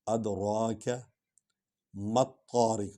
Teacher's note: کو لمبا کیا کیونکہ اس پر مد ہے، ادراک مت طارق، میم اور توئے کو اکٹھے ملا کر پڑھا ہے کیونکہ توئے پر شد ہے، الف لام کو نہیں پڑھیں گے۔